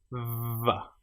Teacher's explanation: The letter or the sound VV is created with your top teeth on your bottom lip. Vv. And you can feel the vibration going on here.